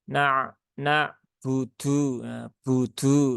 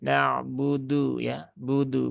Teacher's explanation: huruf dal dan juga huruba itu dia tidak memiliki sifat hams ya maka ya jangan dialirkan